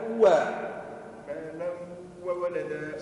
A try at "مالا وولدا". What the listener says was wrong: نحي مالا النون هذه ما ثماش ما لو لو لو وولد ما لو لو